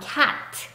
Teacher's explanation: C의 소리는 성대가 울리지 않고 바람만 하고 나오는 새는 소리입니다